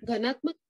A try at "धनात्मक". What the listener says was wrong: अरे घनात्मक नहीं, धनात्मक, धन वाला ध।